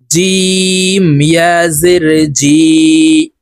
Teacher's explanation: জিম হরফ জিহ্বার মধ্যখান থেকে উচ্চারণ করব।